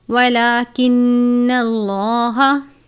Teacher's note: لام سے پہلے زبر ہے، لام کو پر پڑھتے ہیں۔